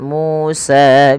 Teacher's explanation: MU dan sa harus dipanjangkan sama ya karena i m thii mu panjang dengan wau sukun